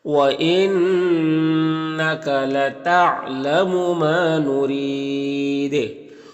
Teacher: را کے نیچے زیر، را کو باریک پڑھیں گے، اور یہاں پر وقف کریں گے تو مد عارض وقفی ہوگا اور دال میں قلقلہ بھی ہوگا، تو اس طرح سے پڑھیں گے۔